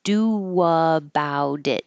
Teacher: when your lips are going from a rounded do to an unrounded about, doa, it'll sound like a W if you're rounding your lips for do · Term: invisible W